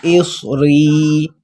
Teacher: اس صاد پر موٹا کر کے منہ کو تھوڑا سا گول کر لینا ہے